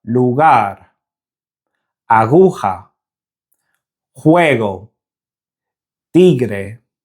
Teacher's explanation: Although the throat closes ever so slightly in Spanish when saying the hard G, the tongue doesn't touch the roof of the mouth, so the restriction in airflow doesn't happen like it does in English, and this produces a much softer G sound